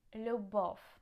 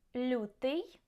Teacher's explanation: instead the letters ya, you, ye, yi after L are just pronounced softly